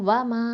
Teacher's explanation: மத்தில் ஜாயிஸ் அல் முன்ஃபசில் அப்படிங்கிற சட்டம் இருக்கிறதுனால 4 இல்லைன்னா 5 அலிஃப் நம்ம நீட்டி ஓதணும். அப்போது வ மா அப்படின்னு நீட்டணும்.